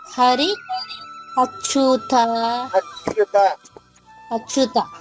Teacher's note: హరి దగ్గరే హ రావాలి అచ్యుత దగ్గర హ రాకూడదు